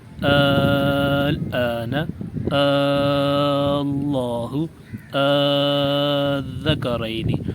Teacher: پہلا طریقہ یہ ہے کہ ان کلمات کو ایک حمزے سے پڑھیں اور اسے 3 گنا کھینچ کر پڑھیں، جیسے الآن، اللہ، الذکرین۔